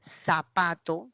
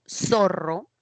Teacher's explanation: el Castellano que llegó a América presentaba el ceseo característica propia del sur de España